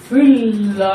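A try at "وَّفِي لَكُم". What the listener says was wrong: এখানে লাম হতে কোনো মাদের কোনো ব্যাপার নেই মাদ হবে না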